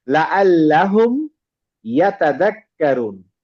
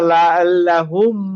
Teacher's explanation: হুমটা আমি ক্লিয়ার উচ্চারণ করলাম, কোনো গুন্না হবে না, নো গুন্না, দেখেন উইদাউট গুন্না, ঠিক আছে, উইদাউট গুন্না।